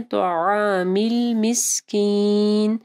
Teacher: عین کو گلے کے درمیانی حصے سے پڑھنا ہے